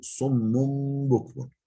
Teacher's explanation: Burada tenvin B'ye uğramış. Yine iklab var. Yani tenvinin nunu mime dönüşmüş.